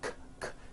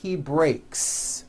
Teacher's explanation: Break ends with an unvoiced K sound. K, k. There's no voicing on that K.